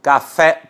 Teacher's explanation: Café, por exemplo, última sílaba fé é a mais forte, é uma oxítona.